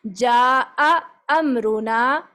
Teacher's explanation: اسی طرح آگے آ رہا ہے یہ جاء امرنا، یہ حمزہ الگ سے، پھر دوسرا والا بھی حمزہ الگ سے. جا کر کے جا نہیں کرنا کہ مدہ کے ساتھ مرچ کر دیں، بلکہ الگ سے آواز نکال کے پڑھیں گے. اس کو کہتے ہیں حمزہ تحقیق کرنا.